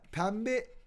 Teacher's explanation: n ile b yan yana geldiğinde M diye okunur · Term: MB değişimi